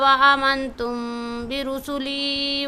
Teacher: تم کے بھی میم پر اخفا کریں گے، با آ گیا ہے آگے